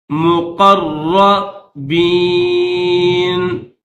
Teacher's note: را کے اوپر تشدید ہے تو را کو سخت کر کے پڑھیں گے۔ مقربین، فَأَمَّا إِن كَانَ مِنَ الْمُقَرَّبِينَ فَرَوْحٌ وَرَيْحَانٌ وَجَنَّةُ نَعِيمٍ۔